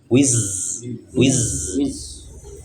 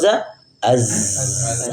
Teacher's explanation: Tapi ada getaran. Makanya zai itu tidak masuk di hamas karena dia memiliki getaran. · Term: jahar